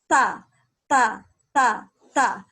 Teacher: Huruf ta harus keluar nafas. Ta harus keluar nafas. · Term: al-hams